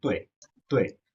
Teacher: আর fourth টোনটা falling, উপর থেকে নিচে পড়ে যাচ্ছে